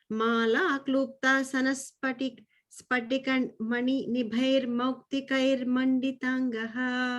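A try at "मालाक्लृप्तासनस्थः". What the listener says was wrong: The second line, I think you're still missing that sanastas. Lipta sanastas.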